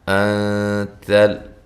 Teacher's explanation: یہاں نون ساکن کا اخفا ہے، باریک اخفا ہے، حمزہ کو تحقیق کے ساتھ ادا کرنا ہے